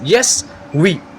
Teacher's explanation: no obstruction in the oral passage, open approximation, quick, smooth, non-frictional glide is there. Means there is no friction when we pronunciate these. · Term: Semi vowels